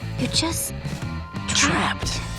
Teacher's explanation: le E est muet et le D va être prononcé comme un T